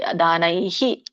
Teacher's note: ಅಥವಾ ವೇದಯಜ್ಞ ಅಧ್ಯಯನೈರ್ನ ಎರಡು ಪದ ಮಾಡಿ ವೇದಯಜ್ಞ ಒಂದು ಅಧ್ಯಯನರ್ನ ಎರಡನೆದು ದಾನೈಹಿ ನೈ ಐ ಇದೆ ಸೋ ವಿಸರ್ಗ ಕೂಡ ಹೈ ಬರುತ್ತೆ